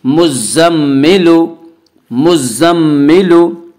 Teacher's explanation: تشدید والے حرف کو 2 مرتبہ پڑھیں گے، ایک مرتبہ پہلے والے حرف میم سے ملا کر، دوسری مرتبہ خود اسے پڑھیں گے مزم، زا میم زبر زم، زا میم زبر زم۔ · را پیش رو، را کے اوپر پیش ہے، پیش کو جلدی پڑھیں، تھوڑا بھی نہ کھینچیں، معروف پڑھیں، مجہول آواز سے بچیں